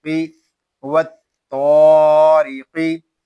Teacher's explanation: قاف حروف مستعلیہ میں سے ہے، اس کو پر پڑھیں گے